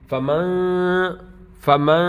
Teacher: نون کی آواز کو ہم ناک میں لے جائیں گے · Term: غنہ